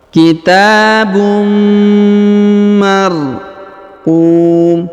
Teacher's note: Kemudian huruf un bertemu dengan mim maka ditahan dan ditekan. Tanwinnya menghilang melebur ke huruf mim ya. Ditahan dan ditekan 2 sampai 3 harokat.